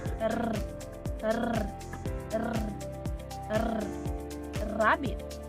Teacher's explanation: sa paraan ng artikulasyon na pakatal na mayroong tinig